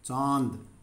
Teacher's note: देखिए, इसकी आवाज़ लंबी है चांद, और मुंह से हवा निकलती है इसको बोलते हुए चांद, नाक से बिल्कुल हल्की आवाज़ निकलती है, हल्की आवाज़ निकलती है, बाकी सारी आवाज़ हमारे मुंह से निकलती है चांद। तो इस पे हमारा अनुनासिक यानी कि चंद्रबिंदु आएगा।